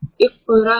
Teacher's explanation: कॉफ के ऊपर कलकला भी है और कॉफ मोटा भी है